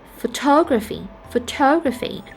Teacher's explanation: for the second word photography photography the second syllable is stressed